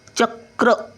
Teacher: कचा उच्चार पटकन आहे, पहिला येतो आणि रचा उच्चार नंतर येतो